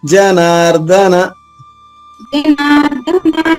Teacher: జనార్దన ఇక్కడ ధ ఒత్తి రాకూడదు